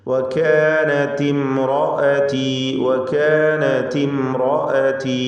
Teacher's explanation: ഇംറഅതി എന്ന പദത്തിലെ സാക്കിനത്തായ മീമിനെ ഇൽഹാർ ഷഫവി നൽകി മണിക്കാതെ വെളിവാക്കുകയാണ് വേണ്ടത്. റാഇന് തഫ്ഖീം കൊടുക്കണം. റാഇന് മാത്രമേ തഫ്ഖീം പാടുള്ളൂ. ശേഷമുള്ള ഹർഫുകളിലൊന്നും തഫ്ഖീം ഉണ്ടാവരുത്. തർക്കീഖ് ചെയ്താണ് ഉച്ചരിക്കേണ്ടത് ബാക്കിയുള്ള അക്ഷരങ്ങളെ.